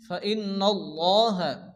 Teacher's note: নুনের উপরে তাসদীদ, নুন গুন্না ওয়াজিব, এবং আল্লাহ শব্দ শুরুতে জবর, আল্লাহর লামকে পুর অর্থাৎ ল উচ্চারণ করে পড়তে হবে। · আল্লাহ শব্দ শুরুতে জবর, আল্লাহর লামকে পুর অর্থাৎ ল উচ্চারণ করে পড়তে হবে। এছাড়া লামের উপরে খারাজ জবর, এই জন্য লামকে এক আলিফ টেনে পড়তে হবে।